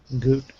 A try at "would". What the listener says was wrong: Close. It sounds like you're saying good here. So one more time, would.